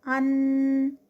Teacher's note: اور جو نون کا لیٹر ہے وہ غنہ کا لیٹر ہے، اس پہ غنہ ہوتا ہے، یعنی نیزلائزیشن، جو ہم ناک میں آواز لے کے جاتے ہیں